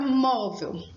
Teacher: Móvel é uma paroxítona. Ela tem a penúltima sílaba forte e ela é terminada em L.